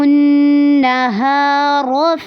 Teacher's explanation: نہارو پہ نون مشدد ہے، غنہ ہوگا اور ہا کو لمبا کرنا ہے. را کو پر کر کے پڑھنا ہے.